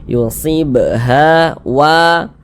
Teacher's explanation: gunakan garisnya kita geser lagi ada Alif sebelumnya ada harakat fathah maka huruf yang memiliki harakat fathah dibaca panjang sehingganya wa dibaca panjang Mad thi'i panjangnya dua harakat